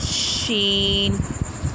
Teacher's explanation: یہ شین منہ کے تقریباً خالی حصے سے ادا ہوتا ہے